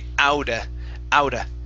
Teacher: we switch that t to what's called a flap t okay which is more like a d sound